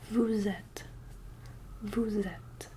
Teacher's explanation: Since there's a vowel following it, we end up with this lovely Z noise.